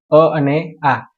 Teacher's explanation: જે કંઠમાંથી બોલાય એવા સ્વરને કંઠ્ય સ્વર કહે છે અ અને આ એ કંઠમાંથી બોલાય છે તાલવ્ય એટલે જે જેની